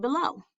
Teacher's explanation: a two syllable foot where the stress is on the second syllable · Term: Iamb